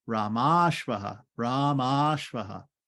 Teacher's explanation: Rama Ashvaha becomes short A at the end of Rama, short A at the beginning of Ashvaha becomes Ramashvaha, Ramashvaha, right? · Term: long A